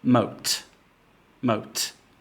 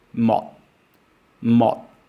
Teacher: the final sound is clearly audible there is a release of air · there is no audible release of air you don't hear the final dot sound